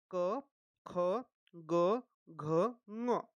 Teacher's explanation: जैसे क वर्ग में आता है क, ख, ग, घ, म। अब जो यह क वर्ग है इनका उच्चारण स्थान जो है, इनका उच्चारण स्थान है कंठ